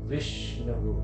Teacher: విష్ ఎక్కువసేపు పలుకుతాం కాబట్టి వి గురువు అవుతుంది అనమాట